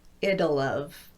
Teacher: Notice that the T in it is being tapped as I link, so it sounds more like a D. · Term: tapped T